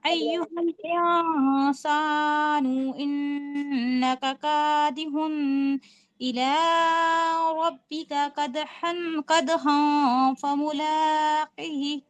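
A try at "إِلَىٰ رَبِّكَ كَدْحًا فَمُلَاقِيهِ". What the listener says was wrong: یہ جو پڑھ رہی تھی نا آپ، قادی ہن، یہ جو غنہ جیسا ساؤنڈ آ رہا ہے نا، یہ نہیں لانا. کیونکہ ہم کیا دیکھ رہے ہیں کہ تنوین کے بعد حمزہ آیا ہے، صرف اظہار ہو رہا ہے.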